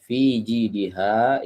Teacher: huruf H ini keluar dari tenggorokan bagian bawah